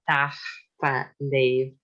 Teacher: So it's so-called pre-aspiration, which is very typical for Gaelic, Scottish Gaelic.